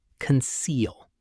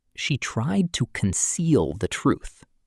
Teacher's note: The stress is on the second syllable, conceal. The first part is light and quick. Don't say conceal.